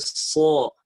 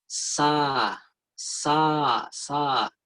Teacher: Ketika huruf sin kita tebalkan, kita isti'lakan, maka bunyinya akan seperti so. So itu paling tinggi alirannya.